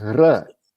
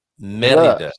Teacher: a single R in the middle of the word is not, it's not gurgled, it's rolled. So it's r.